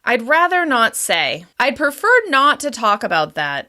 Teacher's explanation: Falling intonation shows certainty and authority and shows you've made a clear decision about whether or not to respond.